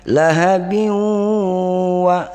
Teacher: Sifatnya itu lahabing. Tapi bing ini dimasukkan ke dalam huruf waw karena hukumnya idgham bi gunnah, jadi didengunkan.